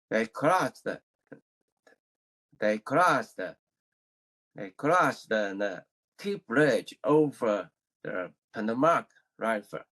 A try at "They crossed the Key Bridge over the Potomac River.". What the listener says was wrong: It needs to be improved because when you say cross the, I'm only hearing one word. There are two words. I want to hear both the words.